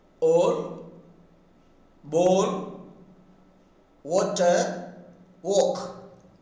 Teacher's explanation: The phoneme O is produced by raising the back of the tongue just above half of the height and sounding.